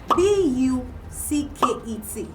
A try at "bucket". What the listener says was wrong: Bucket. Bucket. You don't pronounce with your whole mouth. Bucket. bucket.